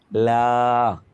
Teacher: পার্শ্বিক ধ্বনি। লা, জিহ্বার ডগায় সামনে আসবে, বাতাসটা 2 পাশ দিয়ে বের হবে